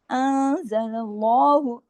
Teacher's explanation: نون ساکن کے بعد زا ہے نا، اخفا حقیقی غنہ کاملہ